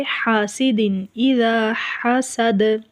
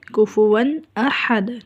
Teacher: حاسد تنوین ہے، تنوین کے آگے حمزہ ہے تو یہاں پر حاسد اذا، حاسد اذا حسد نہیں پڑھا جائے گا، یہاں پر تنوین ناک کے اندر آواز لے کر نہیں جائیں گے